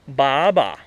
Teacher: ba a first tone ba a second tone